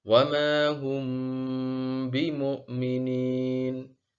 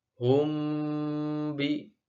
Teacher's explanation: Perhatikan dengungan pada bacaan mim sukun ketika bertemu dengan ba. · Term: ikhfa syafawi